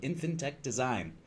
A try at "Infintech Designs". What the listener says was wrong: Infintech Designs, plural. Good enough.